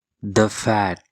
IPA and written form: ðə ˈfɛd (The Fed)